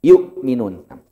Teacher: hamzah itu tempatnya tenggorokan bawah. Jadi harus ada tekanan di sini. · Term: hamzah sukun